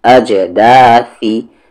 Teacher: قلقلہ کریں گے جیم پر، bouncing sound ہوگی کیونکہ جیم ساکن ہے